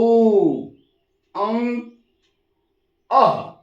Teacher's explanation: अ का उच्चारण नाक से होता क्योंकि इस पर बिंदी